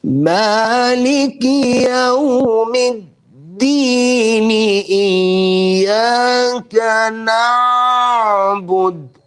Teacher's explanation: they're pronouncing the letter Ain and they would elongate the Ain just to fit the rhythmic maqamat, just to fit the music, the tune, the melody that they're reciting in.